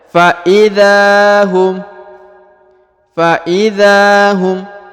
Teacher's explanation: Di depan huruf dha terdapat alif, maka huruf dha dipanjangkan 2 harokat ya